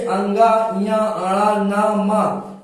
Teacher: जो अंगा है इसका भी उच्चारण स्थान कंठ ही है, लेकिन ये नासिका भी होता है।